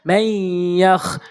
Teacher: এখানে ইয়া রয়েছে, তাহলে এই নুন সাকিনকে আমরা গুণনা করে পড়বো।